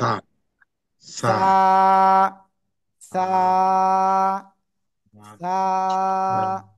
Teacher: জিহ্বার আগা, উপরের দুই দাঁতের আগায় লাগাবেন, লাগিয়ে উচ্চারণ করতে হবে